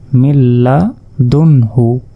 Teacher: নুন সাকিনের পর হা শব্দটি এসেছে যার কারণে এটি হচ্ছে ইজহার আর ইজহার স্পষ্ট করে পড়তে হয় কোন রকম গুন্না ছাড়া